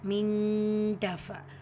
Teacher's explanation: நூன் சுக்குனுக்கு அப்புறமா தா இஹ்ஃபாவுடைய சட்டம் நூனை பாதியை மறைச்சி குன்னா செஞ்சு ஓதணும்